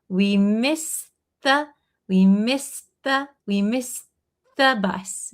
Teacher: So if it's a t sound plus the th sound, they're going to kind of link together.